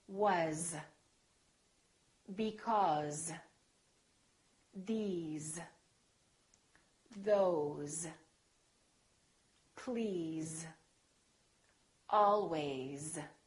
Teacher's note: some very common words that we use all the time that are spelled with an S and pronounced with the Z sound